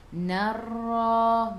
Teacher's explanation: Ra sifat hurufnya takrir, kena ada getaran. Okey, lidah tu berulang-ulang. Takrir. Jadi narra, ra tu kena baca tebal sebab ra tu baris atas.